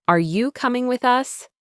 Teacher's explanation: Repeat this question with a rising intonation at the end.